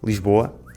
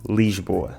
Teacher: Ao contrário do que muitos não lisboetas pensam, Lisboa não fica Lesboa. Ou dizemos rápido Lsboa ou dizemos lento, com o i, Lisboa. Não venham cá com histórias de que dizemos Lesboa, porque isso não é verdade!